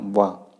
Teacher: आपके दांत और ओष्ठ के मिलने से जो उच्चारण होता है वो वा वर्ण का होता है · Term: दंतोष्ठ